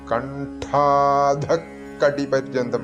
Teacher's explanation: വിസർഗം കഴിഞ്ഞിട്ട് ക വരുമ്പോൾ ഒന്ന് ദിത്വമായിട്ടാണ് ഉച്ചരിക്കേണ്ടത്